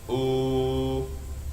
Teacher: When it's followed by wa, sukun, the ooh, now it turns into 2 beats, now it becomes ooh, 2 beats, right?